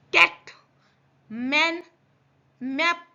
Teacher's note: आप कैट बोल रहे हो पर बड़ी ए की मात्रा आ रही है